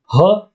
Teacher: ह या वर्णाचा उच्चार करताना फुफुसातील हवा तोंडावाटे जोराने बाहेर फेकली जाते म्हणून या वर्णाला महाप्राण असे म्हणतात महाप्राण का म्हणतात कारण त्याची